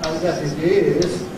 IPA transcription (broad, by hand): ɪt ˋ͵ɪz